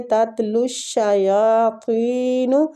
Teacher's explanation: لام کو شین کے ساتھ شدت سے ملائیں گے، شین کے اوپر تشدید ہے، اور یا کو کھینچیں گے، کھڑی زبر ہو رہی ہے۔